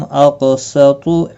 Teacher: طا مستعلیہ ہے، پر پڑا جائے گا